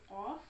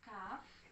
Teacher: lidah saya urut dari belakang, yaitu qaf, ke depan dikit kaf